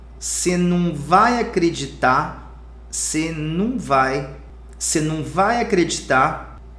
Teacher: Okay, it's a standard Portuguese, but in real life we're gonna say você não vai acreditar, você não vai acreditar. In this case we suppress the R sound.